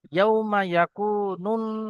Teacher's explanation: নুনের উপরে গুন্না হবে, ওয়াজিব গুন্না। ইয়াউমা ইয়াকুনুন না, না টান হবে, আলিফ মাদ্দা, আলিফের ডান দিকে জবর।